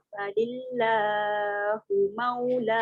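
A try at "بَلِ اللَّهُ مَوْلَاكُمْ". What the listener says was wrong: Jangan panjang dia lebih. Pizza 2 je. Balillahu maulakum. Balillahu Dia terlebih 2 harakat. Dia jadi 3.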